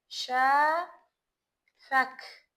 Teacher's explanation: Deməli, ərəb fars mənşəli sözlərin sonu q ilə bitdikdə necə tələffüz olunacaq? K ilə tələffüz olunacaq.